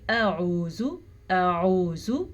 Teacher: حمزہ اور عین دونوں کی آواز میں واضح فرق ہونا چاہیے، یعنی کہ دونوں کا مخرج الگ الگ ہے، اور دونوں کے درمیان میں اتنا گیپ بھی نہیں ہونا چاہیے کہ کھڑی زبر کا احتمال ہو۔